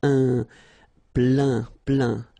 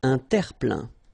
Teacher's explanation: Remember this E-I-N nasal. So it goes in your nose and it's un plein, plein.